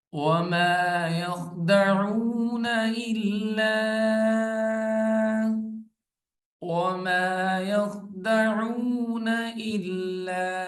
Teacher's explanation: لام کے ساتھ الف ہے اور اوپر مد ہے، 3 الف کی مقدار اس کو لمبا کریں گے